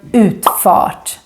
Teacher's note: here the U becomes really really long even if it looks like it's followed by two consonants